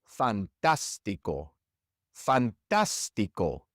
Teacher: In this word, we stress the third to last syllable